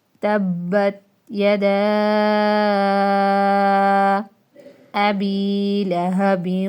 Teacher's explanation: آگے یہ دیکھیں 2 زیر کے بعد واو یا ملعون میں سے نشان آپ نے خود لگایا ہے گنہ، ٹھیک ہے، ادغام مع الغنہ جس کو کہتے ہیں، ٹھیک ہے۔ آگے با پہ ڈبل کلکلا کیونکہ با مشدد ہے، با کے اوپر شد ہے، ڈبل کلکلا ہوگا۔